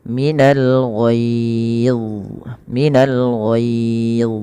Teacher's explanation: pangkal lidah kita angkat untuk menebalkan huruf dha dan lekatkan lidah kepada langit-langit atas, karena huruf dha juga ada sifat idbaqnya.